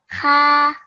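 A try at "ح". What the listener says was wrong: Okay, just make sure with ha is a round and a thick letter. So when you say make sure that when you pronounce it that it comes out a bit thick.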